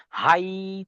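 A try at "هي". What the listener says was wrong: না, হাই বলে উচ্চারণ টান হবে না। হাই শটে।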